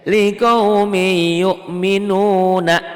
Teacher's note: comment n-nya ini karena ujungnya tanwin itu n Anin ujungnya n bunyi n-nya akan berubah menjadi y karena kasrotain ketemu ya ini Idgham Bighunnah ditulisnya rikau mint yu'minun dibacanya tuh berubah n-nya hilang ditelan y